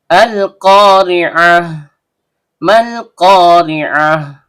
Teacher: Terdapat hamzah wasol yang terbaca A karena kita memulai bacaan atau ibtida sehingga keluar dari tenggorokan bagian bawah